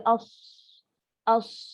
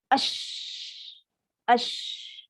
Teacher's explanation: Sifat tafashi. Cuma beza angin tu berhamburan.